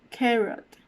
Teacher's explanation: flex sounds it's when for example in producing this r sound the tone will be curled back backwards almost touching the roof of your mouth so that's what would be considered to be a retroflex sound